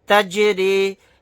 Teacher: یہاں پر جیم ساکن ہے، یہاں پر قلقلہ کر کے پڑھیں گے